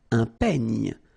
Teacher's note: Then un peigne. Final E, you don't insist on it. It's ny, the last sound.